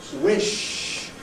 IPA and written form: wɪʃ (wish)